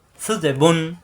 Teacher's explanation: সু জিবের আগা দাঁতের আগা লাগিয়ে